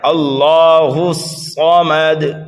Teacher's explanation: صاد کو ہمیں دو بار پڑھنا ہے، ایک مرتبہ پیچھے والے حرف ہا سے ملا کر اور دوسری مرتبہ اپنی حرکت کے مطابق، لیکن صاد کو ہمیں پر بھی پڑھنا ہے اور اس پر جمع کر کے پڑھنا ہے، اللہ الصمد، ٹھیک ہے۔ · اگر ہمیں صاد کو موٹا کر کے پڑھنا ہے، میم کو جلدی پڑھنا ہے، اور دال کو بھی ہمیں جلدی پڑھنا ہے، اس لیے کہ یہ تینوں حرف جو ہیں وہ متحرک ہیں۔ جب ہم دال پر وقف کریں گے تو یہاں پر ہم قلقلہ کبیرہ کریں گے